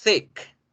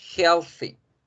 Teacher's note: Es importante que generen así de esa forma interdentales porque si no, pueden confundirme thick con tick. Porque si yo hago tic, tic, tic, no hago el thick, la gente se va a confundir.